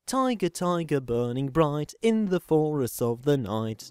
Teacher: in both cases the foot of the meter consists of one stress and then one unstressed syllable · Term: stressed unstressed